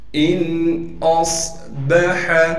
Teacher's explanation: اسی طریقے سے حمزہ کو صاد سے ملائیں گے اس لیے کہ صاد ساکن ہے اور صاد میں سیٹی بھی ادا کریں گے اور صاد کو موٹا بھی کر کے پڑھیں گے۔ با کو صاف کر کے پڑھنا ہے بغیر کھینچے۔ · حمزہ کو نون سے ملائیں گے اس لیے کہ نون ساکن ہے، بغیر غننے کے ملانا ہے۔ اسی طریقے سے حمزہ کو صاد سے ملائیں گے اس لیے کہ صاد ساکن ہے اور صاد میں سیٹی بھی ادا کریں گے اور صاد کو موٹا بھی کر کے پڑھیں گے۔